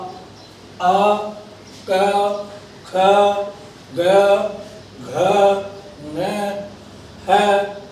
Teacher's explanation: एषां वर्णानां उच्चारण स्थानः कंठः अस्ति